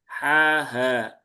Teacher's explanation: Kalau ha ya di pangkal tenggorokan yang paling bawah. Kalau ha dia ada di tengah. Ha ha ha. Nah, ini rang saya enggak enggak berubah. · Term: huruf tenggorokan